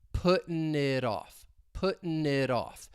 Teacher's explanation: That T in it, once again, you're going to hear me pronounce it as a flap T, and we're going to link it with off, puttin' it off.